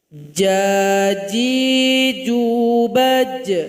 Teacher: Ketika sukun ada bunyi qalqalah, ada pantulan.